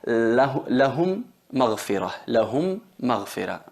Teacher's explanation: Ahí son 2 palabras, pero la primera M es con sukun muda y la otra es con vocal fatha. Entonces fusionamos la primera en la segunda y se convierten en una M reduplicada con shadda, y ahí tenemos que hacer la nasalización, que es la gunna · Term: fusión labial